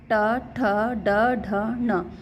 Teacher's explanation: इसमें हमारी जीभ ऊपर की तरफ रोल हो कर के मुर्धा पर लग रही है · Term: ट वाले वर्ग